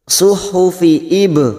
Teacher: ba sukun qalqalah sugro, karena mati asli di tengah kalimat kita pendulkan Ibrahim, ro fathah berdiri dua harokat, rohima ada kasar bertemu ya sukun dua harokat, ima wa Musa, Musa masing-masing dua harokat kita panjangkan.